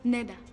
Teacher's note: Dans le langage d'Abydos, on constate que les consonnes fortes ont tendance à s'affaiblir, comme dj qui devient d et tch qui devient t